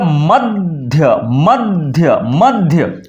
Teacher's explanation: ध के पहले क्या आ जाएगा द अपने आप द का उच्चारण हम करेंगे